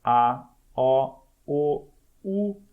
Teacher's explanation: Então, se você fizer aqui a comparação de sons nessa série aqui do A até o U, então A, O, U, você vai perceber que U é mais fechada e A é mais aberta